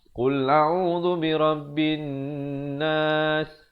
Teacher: mestilah nun sabdu kena dengung